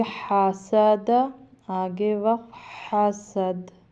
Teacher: ہا بھی حلق سے نکالنا ہے، اور دال چونکہ حروف قلقلہ میں سے ساکن کریں گے تو اس کو تھوڑا سا قلقلہ کریں گے، یعنی ہلائیں گے۔